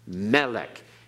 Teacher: It's not melech, it's melech, okay? Accent on the first syllable. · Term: Milel